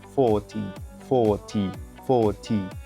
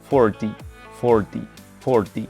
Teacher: we have British, non-rhotic, and it sounds 40, 40, 40. And American rhotic, that sounds 40, 40, 40. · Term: rhotic and non-rhotic